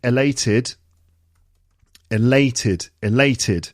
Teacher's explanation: we've got the uh the adjective elated elated elated second syllable three syllables and it's the second syllable